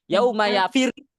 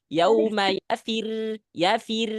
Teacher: Jadi ketika masuk ke ro baru ada tekanan.